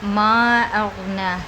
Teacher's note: الف مدہ کے بعد حمزہ دوسرے کلمے میں تو یہاں پر مد منفصل کا قاعدہ ہو رہا ہے، چاہے تو دو سے ڈھائی الف کھینچیں، چاہے تو ایک الف کھینچیں